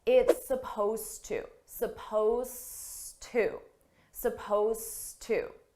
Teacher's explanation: now notice here supposed to suppose is spelled with an ed it's an ed verb but you don't hear it at all